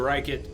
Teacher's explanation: descriptions of that the sound of L is foreign so often native Japanese speakers in English ends up replacing an L with an R